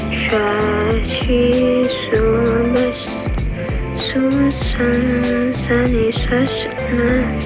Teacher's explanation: Selanjutnya, huruf Sya. Keluar dengan menyentuhkan tengah lidah dengan langit-langit, diucapkan dengan mengalir udaranya dan nafasnya.